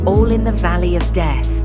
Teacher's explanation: the last syllable, the word death, is stressed, so it feels like the start of a new foot altogether. This is called a masculine ending.